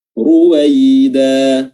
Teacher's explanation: ru-nya di sini tebal ya karena berharakat dhammah